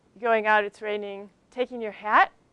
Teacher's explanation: the sound goes up the tone rises at the end of the sentence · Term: rising tones